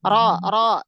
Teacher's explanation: ro berharokat fathah, maka dibaca tafhim, ya. Ro. Nah, cara mentafhimkannya sama kayak huruf isti'la, angkat pangkal lidah.